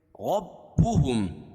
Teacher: را پر زبر ہے تو را کو پور پڑھیں گے اور میم ساکن کے بعد یہاں بھی میم اور با کے علاوہ کوئی اور حرف آئے تو یہاں بھی اظہار شفوی ہوگا.